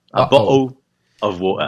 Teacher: no Cockney, aí sim é mais o Cockney, eles trocam o L final pelo som de W, né, de U. Então em vez dele falar bottle, eles falam bottle.